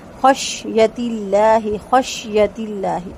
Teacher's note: سین کو مکمل سکون دے کے پھر یا کو پڑھیں گے اور اللہ کا لام باریک ہوگا